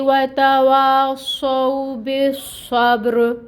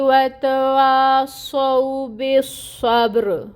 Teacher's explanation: صاد حروف مستعلیہ میں سے ہے، اس کو پر پڑھا جائے گا اور اس کی صفت بھی واضح کریں گے، یعنی اس میں سیٹی لے کے آئیں گے۔ پھر با ساکن، جہاں پہ با ساکن ہو وہاں پہ قلقلہ ہے کیونکہ یہ حروف قلقلہ میں سے ہے، را کے نیچے زیر کی حرکت کسرہ، لیکن اس کو ہم نے ساکن کر دینا ہے حرکت کو کیونکہ آگے وقف ہو رہا ہے تو ہم نے را کو پر پڑھنا ہے۔